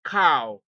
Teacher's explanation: a combination of a and u as in cow